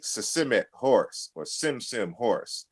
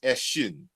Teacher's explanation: So the S sound or grapheme corresponds with the sh sound in the Yoruba language.